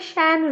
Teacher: এই স্বরধ্বনি হলো অ্যা। অ্যা আ ও এ ধ্বনির মধ্যবর্তী ধ্বনি